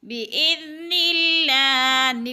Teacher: بِإِذْنِ اللَّهِ، نلہ پہ اللہ کو باریک کر کے پڑھیں گے، اس لیے کہ اللہ سے پہلے لفظ نون کے نیچے زیر ہے تو اللہ باریک پڑھا جائے گا